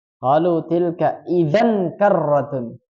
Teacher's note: Nah, di situ ada tanwin ketemu kaf. Apa hukum bacaannya? Ikhfa. Jadi membacanya samar.